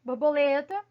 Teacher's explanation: Borboleta, o Lé, aí é a sílaba mais forte